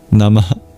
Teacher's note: the Visarga, the expulsion of breath. It's like a mini exhale